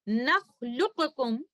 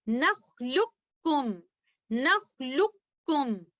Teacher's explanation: Letter कॉफ मुकम्मल तौर पर मर्ज हो जाएगा लेटर कैफ के अंदर, लाम को हम लेटर कैफ के साथ मिलाएंगे इस तरह से नख्लुकुम नख्लुकुम, और इस इदगाम को हम कहेंगे इदगाम मुतकारिबान सगीर, اور اس تعلق کو ہم کہیں گے ادغام متقاربان صغیر ریلیشن شپ.